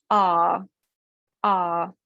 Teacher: The mouth goes from that really open, relaxed place to a more closed position. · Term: diphthong